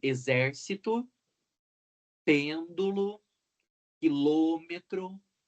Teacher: Proparoxítonas, quando o acento recai na antepenúltima sílaba.